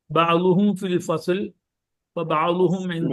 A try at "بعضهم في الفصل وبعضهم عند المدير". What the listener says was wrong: അവസാനത്തെ അടയാളം കൊടുക്കൂ സുഹൃത്തെ, അവസാനത്തെ അടയാളം കൊടുക്കൂ. ഫീ വന്നാൽ കസ്ർ കൊടുക്കണം, എന്ത വന്നാൽ കസ്ർ കൊടുക്കണം.